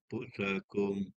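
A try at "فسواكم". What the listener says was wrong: Haji jangan rapat bibir. Bibir jangan rapat. Fa kan kalau kita sebut fa, bibir jangan rapat. Fa, bibir meletak pada tempat keluar huruf fa. Bibir jangan rapat. Jangan rapat bibir. Jadi mim pula ni. Fusakum.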